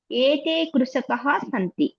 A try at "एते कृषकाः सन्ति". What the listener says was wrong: బహువచనంలో కృషకः ఏమవుతుంది? కృషకాః. దీర్ఘం కదా. దీర్ఘం రావాలి. ఏతే కృషకాః